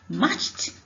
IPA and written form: mɑ:tʃt (Matched)